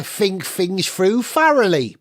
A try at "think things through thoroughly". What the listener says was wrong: It's not think things through thoroughly, is it? It's think things through thoroughly. You have a tendency to pronounce the letter th as a f.